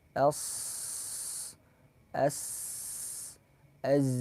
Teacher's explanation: suara yang keluar yang kuat yang tajam di antara ujung lidah sama gigi seri bawah atau ada yang mengatakan keluarnya antara gigi seri bawah sama gigi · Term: safir